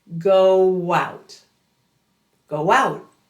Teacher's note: And we're going to draw out the W between the two sounds. Round your lips, elongate the W sound at the end of go, and let it glide right into out.